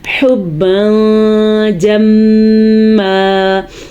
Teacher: میم کے اوپر ہم نے شد ادا کی اس لیے غنہ ہو گیا